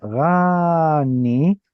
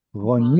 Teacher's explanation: the noon is doubled, that means we have a noon closing the previous syllable that is unstressed. So it's not rani, but rather roni. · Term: kamatz katan